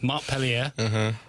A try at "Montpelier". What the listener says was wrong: Don't give it a French accent. Don't give it that. That's not how we say it in this here United States. Montpelier. Well, that's how you're supposed to say it.